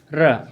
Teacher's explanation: प्यारे बच्चों इसको कहते हैं प्रक पित प्रक पित व्यंजन अर्थात र को बोलने में हमारी पूरा जीभ काप उठता है ऐसे पूरा काप इसलिए इसको हम लोग प्रक पित व्यंजन कहते